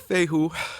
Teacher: a hiatus breaker essentially it's there to tell the reader that there is a syllable boundary between the e and the u